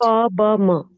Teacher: The labial sounds, where both the lips are used.